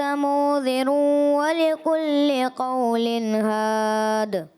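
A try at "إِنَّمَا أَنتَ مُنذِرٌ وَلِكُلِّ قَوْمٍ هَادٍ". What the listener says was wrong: جی انہوں نے پڑھا، تھوڑی غلطی بھی ہوئی ہے آیت میں، اور ایک تو مد منفصل اور پھر غنہ کی ادائیگی، پھر آخر میں انما، یہاں پر بھی مد منفصل کی ادائیگی، غنے کی ادائیگی، اور آخر میں ولی کلی کا باریک، یہاں کا بھی تھوڑا پر کی طرف گیا، اور ولی کلی قوم ہادی، قولی ہاد شاید آپ نے پڑھ دی لام، تو یہ نہیں ہے، ولی کلی قوم ہاد، یہ کرنا ہے۔ وَيَقُولُ الَّذِينَ كَفَرُوا لَوْلَا أُنزِلَ عَلَيْهِ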